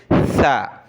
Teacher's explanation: زبان کی نوک دانتوں سے تھوڑی سی باہر نکال کر اس کے بعد ہم نے آواز نکالنی ہے سا · سا پر ہم نے سیٹی کی آواز نکالنے سے بچنا ہے۔ سیٹی کی آواز سین اور صاد میں نکالی جاتی ہے، یہ سا ہے۔